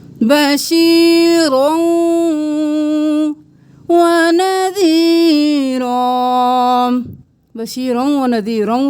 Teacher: رو موٹا اور 2 زبر کو واو کے ساتھ ملا دیں